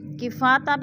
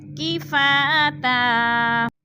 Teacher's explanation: ہم نے الف مدہ کو ایک الف دو حرکات کے برابر کھینچ کر پڑھنا ہے